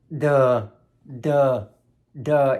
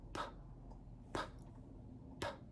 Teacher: For example, the letter D is voiced. Duh, duh, duh. You can feel the vibration. But the letter P is not voiced. P, p, p. No vibration.